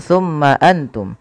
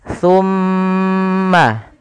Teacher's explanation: Yang pertama, kita harus perhatikan pada lafal mim berharakat tasydid. Ketika mim itu berharakat tasydid, wajib ditahan suara gunnahnya.